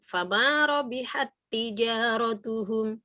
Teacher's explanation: tak sukunnya hilang sama sekali menjadi tak bertasdid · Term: idgham mutamatsilain